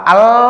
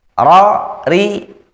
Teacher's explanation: Bedakan lam dengan ro itu karena ro ini punya sifat getarnya, sifat takrirnya ini ada pada huruf ro, tidak ada pada huruf lainnya.